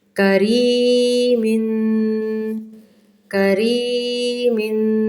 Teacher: میم دو زیر من، تنوین غنہ کریں گے 2 سیکنڈ کے لیے